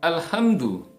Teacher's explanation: alhamdu dengan hak yang makharijul hurufnya, tempat keluar huruf hak ini adalah di bagian tengah tenggorokan. Jangan dibaca alhamdu, ya, alhamdu, hak, ya, hak yang berat, hak yang besar ini keluarnya dari pangkal tenggorokan.